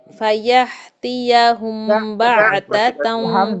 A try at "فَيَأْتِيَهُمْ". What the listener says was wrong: Hamza cutting sound then